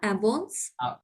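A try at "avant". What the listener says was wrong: না, আবং, last letter silent রাখতে হবে। আবং,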